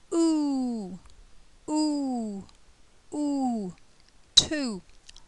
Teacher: again a long sound the mouth is closed the lips are very tightly rounded and the tong T is at the back of the mouth